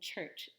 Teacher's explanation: that's a combination of T and Sh into one sound